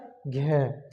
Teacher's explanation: सघोष भी है और महाप्राण भी है महाप्राण यानी आपको समय लगेगा थोड़ा सा सघोष यानी आपको थोड़ा सा वाइब्रेशन से होगी अगर आप बोलोगे